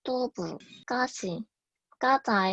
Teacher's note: 어두 자음이 경음화되는 현상입니다. 전라도, 충청도, 경상도에서 공통적으로 나타나며 뚜부, 까시, 까자의 형태로 나타나 비교적 원래의 단어를 유추하기는 쉽습니다.